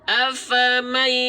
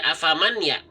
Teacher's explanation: Bunyi 'n' menyatu dengan bunyi 'ya' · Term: idghom bi gunnah